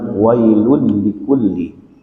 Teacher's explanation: tanwin bertemu dengan huruf lam Inilah yang disebut dengan Idgham bilagun langsung suara tanwinnya itu digabung kepada lam tapi bilagunnah jangan sampai berdengung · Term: Idgham bilagunnah